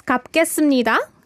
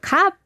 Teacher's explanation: It's like almost like a glottal stop. It's a shortened p.